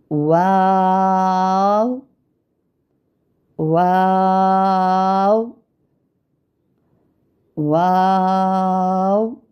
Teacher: واو کی ادائیگی دیکھے کرتے ہیں تو ہمارے ہونٹ گول ہو رہے ہیں، اور کیا ہوتا ہے کہ ہونٹوں کو گول کرتے ہوئے اوپر کی جانب کھول کر درمیانی سی مد کرتے ہیں، اور پھر سے ہونٹوں کو چونچ کی مانند گول کرتے ہوئے ہم باریک آواز میں ادا کرتے ہیں